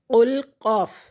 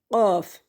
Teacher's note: قل من كان عدوا لجبريل فإنه قل قاف موٹا پڑھیں گے، قل قاف، یہ والا قاف موٹا پڑھا جائے گا۔ زبان کا پچھلا حصہ اٹھتا ہے اور تالو کے نرم حصے کو مس کرتا ہے، ٹچ کرتا ہے، تو یہ قاف ادا ہوتا ہے۔